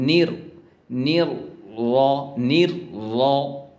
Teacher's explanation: র টাকে মোটা করতে হবে থিক থিক মানে মোটা মোটা করতে হবে